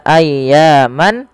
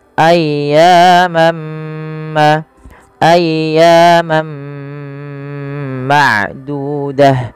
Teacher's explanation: masukkan tanwiinnya kepada huruf mim dan diganti bunyinya awalnya ayyaman menjadi ayyamamma ayyamam ma'dudah Ya ditahan dan diganti suaranya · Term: Idgham